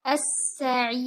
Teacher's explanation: Stick to any one of them while stopping. And make sure that your ra is light, because it is preceded by ayyamad. As-sa'ir. And give it mutawassita timing while stopping.